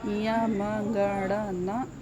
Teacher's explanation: इया म ग ड़ न, इन सब का उच्चारण स्थान होता है नासिका